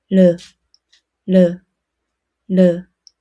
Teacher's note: your tongue touches the gum behind your upper teeth. Say 르. Make a quick, light tap. The air flows along the sides of the tongue.